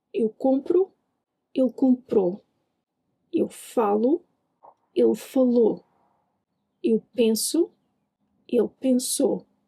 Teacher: In fast European Portuguese, the final O in the present can get really reduced. Basically, it almost vanishes.